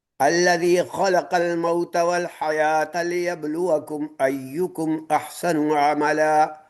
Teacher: لیبلوکم میں با جو ہے اس کے اندر قلقلہ ہے